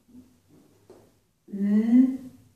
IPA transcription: n